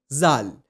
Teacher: To pronounce it correctly, just touch the tip of your tongue underneath the front two teeth of your upper jaw and say zal. It's going to give you tal just like the tha in the beginning.